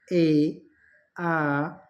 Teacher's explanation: ओठ वृत्ताकार न होकर फैले से रहते हैं वे स्वर अवृत्ताकार कहलाते हैं, जैसे ए, आ, ठीक है, इस तरह से।